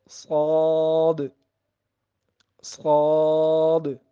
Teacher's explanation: جو صاد ہے وہ زبان کی نوک اور دونوں دانتوں کے جو اندرونی کنارے ہیں وہاں سے ادا ہوگا۔